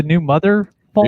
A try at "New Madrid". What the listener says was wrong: New Madrid. Not Madre. Madrid. The New Madrid Fault.